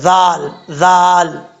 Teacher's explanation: ذال کا مخرج ہے، زبان کا سرا اوپر والے دانتوں کے اندرونی کنارے سے لگے، پہلے یہ مخرج آپ کو بتا چکا ہوں، اور اس میں سیٹی نہیں آئے گی، بغیر سیٹی کے پڑھا جاتا ہے یہ ذال، جو دال کی شکل میں ذال ہوتا ہے اس کے اوپر نقطہ ہوتا ہے تو یہ بغیر سیٹی کے پڑھا جاتا ہے، ذال ذال۔